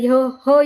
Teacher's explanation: ह चा उच्चार करताना फुफुसातील हवा जोरात बाहेर फेकली जाते म्हणून या वर्णाला महाप्राण वर्ण असे म्हणतात